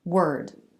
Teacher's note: 3 sounds, not 4, because the R vowel and consonant are the same.